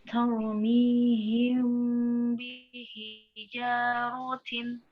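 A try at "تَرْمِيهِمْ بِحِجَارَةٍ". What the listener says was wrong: Ya, ketebalan juga harus kedengeran juga ya. Tau, mi, tau. Ya, masih belum huruf ta-nya. Tau, tau. Nah, tau.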